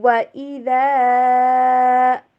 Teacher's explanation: ہونٹوں کو گول کرتے ہیں، کمپلیٹلی ہونٹوں کو جوڑتے نہیں ہیں، جسٹ گول کرتے ہیں، اور وی والی ساؤنڈ پہ نہیں پڑھتے، وی انگلش میں جو وی ہوتی ہے نا اس ساؤنڈ پہ نہیں، بلکہ ڈبلیو والی ساؤنڈ کے اوپر پڑھیے۔